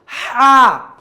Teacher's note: এই হা এর উচ্চারণ একটু সফট হবে নরম হবে এবং বাতাস বের হবে